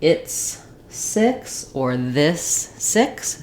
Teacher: Don't let it become too tense like E or too open like E. You want that middle, relaxed, high front, lax vowel, I. Again, you can use another word like it's 6 or this 6 to match that I sound.